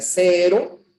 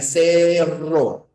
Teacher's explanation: es la vibrante simple y la vibrante múltiple